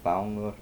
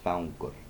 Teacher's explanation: It's just the nasalization of the I there, nasalization of the I. in Icelandic you pronounce the G's as distinct